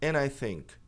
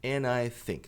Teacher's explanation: mas é comum simplesmente esquecer o D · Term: D que some